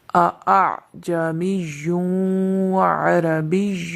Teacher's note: وہ کلمہ ہے اعجمی عربی، یہاں پر 2 حمزہ ہیں، ایک پہلا حمزہ حمزہ زبر آ، اور دوسرا حمزہ حمزہ عین زبر آ۔ یہاں پر جو دوسرا حمزہ ہے اس میں تسہیل واجب ہے، اس کو نرمی کے ساتھ ادا کیا جائے گا